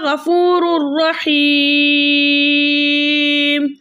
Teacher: را کے اوپر 2 پیش کی تنوین اور 2 پیش کی تنوین کے بعد را آ رہا ہے، تو ہم 2 پیش کی تنوین کو را سے ملا کے اس طرح پڑھیں گے کہ دونوں ایک ساتھ مشدد ہوں لیکن غنے کے بغیر، اور اس قاعدے کا نام ہوگا ادغام بلا غنہ۔